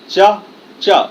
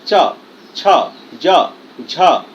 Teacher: देखिए जीभ कहा जा रहा है, ऊपर पीछे की तरफ जा रहा है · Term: चवर्ग